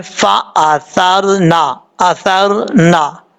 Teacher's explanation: اب یہاں پر اس کے بعد ہے فا زبر فا، حمزہ زبر آ، فا آ، ثا زبر را، سر. یہ جو ثا ہے اس کا مخرج ہے زبان کا سرا اوپر والے دانتوں کے اندرونی کنارے سے لگے تو ثا پڑھا جاتا ہے. را ساکن سے پہلے زبر اور را پر پڑھا جاتا ہے.